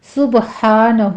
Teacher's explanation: سبحانہ میں با پر قلقلہ کریں گے ، ہا کو وسط حلق سے ادا کرتے ہوئے 2 کاؤنٹ